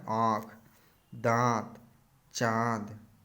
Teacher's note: जिन वर्णों के उच्चारण में हवा नाक और मुख दोनों से निकलती है, अनुनासिक कहलाते हैं